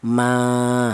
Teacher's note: Ini dibaca tabi'i, yaitu panjangnya satu alif atau dua harakat atau dua ketukan, ma, seperti itu.